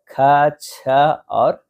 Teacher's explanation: महाप्राण वे व्यंजन होते हैं जिनके उच्चारण में मुख से अधिक जो है हवा निकलती है और हकार जैसी ध्वनि होती है।